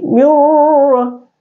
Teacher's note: Jadi jangan lidah bergetar pada saat menyebut ra, ya. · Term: ra tanpa getar